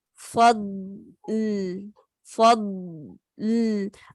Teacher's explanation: جب ضاد کی رخاوہ کمپلیٹ کر لیں، پھر آپ لام کے مخرج پہ جائیں گے تو آواز دونوں کی نکلے گی